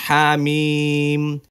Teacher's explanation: হরফটিকে 4 আলিফ টেনে পড়তে হয় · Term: মাদ্দে লাজিম হরফি মুখাফফাফ